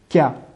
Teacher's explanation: pour la lettre kef, c'est le fond de la langue qui se colle à cheval, si l'on veut, entre le palais mou et le palais dur, le palais osseux.